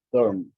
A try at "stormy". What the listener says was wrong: So you have to pronounce that Y. So put a little emphasis on that. Stormy, stormy. yeah, look at this Y like a little I, okay?